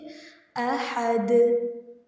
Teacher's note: احد میں دال کو ہم ہلا کر پڑھیں گے جسے ہم قلقلہ بولتے ہیں، ٹھیک ہے، احد۔